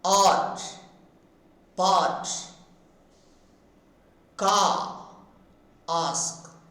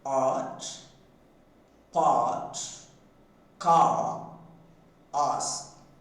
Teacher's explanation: A is produced by keeping the tongue as low as possible and raising the back of the tongue slightly and sounding. When we produce this frame, the lips are wide open and the tongue is neutral.